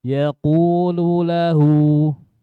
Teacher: Yaqulu lahu qulu, bukan qulu. Ku-nya yang tebal, lu-nya tipis.